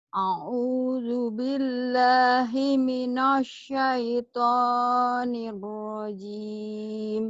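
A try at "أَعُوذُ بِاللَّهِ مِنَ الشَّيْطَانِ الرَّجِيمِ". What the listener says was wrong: jangan di monyongin himinas bunyi jadi dibuka lebar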